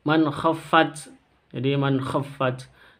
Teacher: Man khaffat, jadi man khaffat, non sukun berjumpa dengan kha, bacaan izhar, cara bacanya jelas, jangan didengungkan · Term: izhar halqi